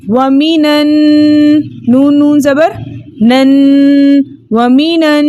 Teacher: اس لیے ہم نے اجتماعی ساکنین فی کلمتین کے چوتھے طریقے کے مطابق من کے نون کو زبر دے کر پڑھا، حمزۃ الوصل درمیانی کلام میں آنے کی وجہ سے حذف ہو گیا، اور نون مشدد میں چھپا نون ساکن کو ہم نے نون مفتوحہ سے ملا کر پڑھا، یعنی زبر والے نون سے ملا کر پڑھا۔